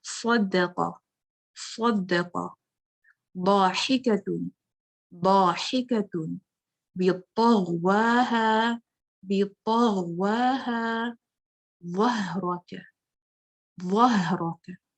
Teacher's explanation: اس میں extra ordinary heaviness پائی جاتی ہے جس کو اطباق کہتے ہیں